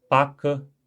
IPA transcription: pakə